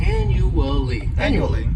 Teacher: this word has four syllables and the stress is on that first syllable the second syllable it's like you're just saying that letter U